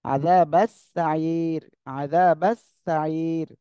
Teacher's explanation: এখানে কি তিন আলিফ টান হবে আর রটা চিকুন হয়ে যাবে